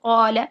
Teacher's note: جھٹکے والا ساکن یہ ہوگا جو کہ حمزہ بن جائے گا، اور یہ ساکن، یہ جو الف ساکن ہے یہ بے جھٹکے ہے، یعنی جھٹکے کے بغیر ہے، تو اسے ہم کہیں گے الف مدہ، جیسے قال، ٹھیک ہے۔ قا الف مدہ کو پھر ہم دو حرکات کھینچ کر لمبا کرتے ہیں